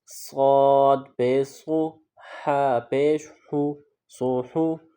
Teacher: صاد جو ہے اس کی ادائیگی میں سیٹی کی آواز پیدا کریں گے اور ح کو حلق سے ادا کریں گے اور پھر دونوں کو ملائیں گے۔